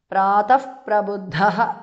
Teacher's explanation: ಪ್ರಾತಃ ವಿಸರ್ಗ changes to ಉಪದ್ಧಮಾನಿಯ